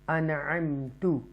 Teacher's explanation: اگلا لیٹر حمزہ سے شروع ہو رہا ہے اور یہ ہے انعمت. حروف نون ساکنہ کے بعد حروف حلقیہ میں سے تھروٹل لیٹر میں سے عین آ رہی ہے، تو اس لیے ہم اس کو اظہار کریں گے